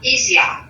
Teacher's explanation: So Australian doesn't like that R sound. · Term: Australian accent